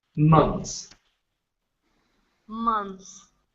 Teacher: No TH needs to be pronounced in the pluralized form of this word.